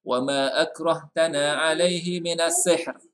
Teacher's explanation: sihr mesti ada sikit, jangan panjang ya, satu harkat sahaja